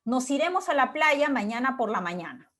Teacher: el tonema va subiendo un poco, se mantiene y luego baja cuando yo ya cierro el enunciado, cierro la oración. · Cuando el enunciado oración consta de un solo grupo fónico, su esquema es simple, ¿no? El tonema sube, se mantiene y finalmente baja. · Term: oraciones enunciativas